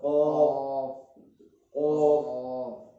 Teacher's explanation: زبان کی جہاں یہ ہے راؤنڈ وہ ختم ہو جاتا ہے، زبان کی جڑ اوپر والے نرم تالو سے قاف، قاف، اور اس سے باہر تھوڑا باہر نکل کر زبان کی جو جڑ وہی ٹچ ہوگی.